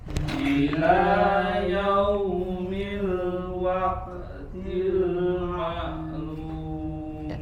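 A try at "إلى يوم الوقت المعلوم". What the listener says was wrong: Ila yau ya, huruf waw sukun ya sempurna, jangan yaumi yau atau lebih condong ke huruf o ya. Tidak seperti itu, tapi sempurnakan yaumi, monyunkan kedua bibirnya.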